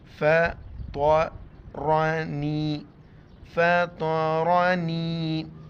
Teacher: طا کو اور را کو جو ہے نا موٹا کر کے پڑھیں گے